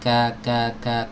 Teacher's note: Ada hamsnya tapi sangat sedikit, sangat lemah ya. Sifat hams pada huruf kaf ini bisa muncul jelas itu tatkala dia sukun ya.